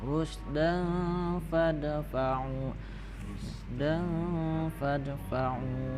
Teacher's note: tanwin bertemu fa, itu hukumnya ikhfa, jadi ikhfa itu samar-samar beserta dengung